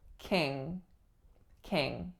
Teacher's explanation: the final syllable is a nasal velar